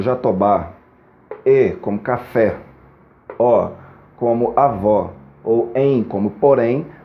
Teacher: palavras oxítonas terminadas nestes casos a e o ou em oxítonas são palavras que tem pelo menos duas sílabas e a última sílaba é a mais forte na sua pronúncia